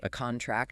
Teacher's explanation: Contract with the stress on the first syllable, which is the noun, the document.